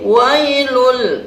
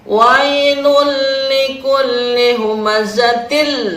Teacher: ada tanwin dhomah bertemu dengan huruf lam yaitu dimasukkan ke dalam huruf lam huruf yang kedua Tapi tidak didengungkan disebut dengan Idgham bilagunnah idgam artinya memasukkan bilagunnah dengan tidak mendengung